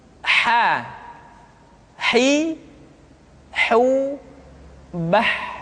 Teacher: Huruf ha dikeluarkan dari tengah-tengah tenggorokan.